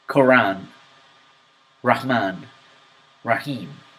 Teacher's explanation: Quran, Rahman, Rahim. Notice that R has almost no vibration of the tongue.